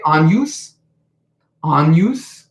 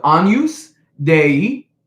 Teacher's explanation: So everyone say agnus, agnus. That G becomes an ng sound.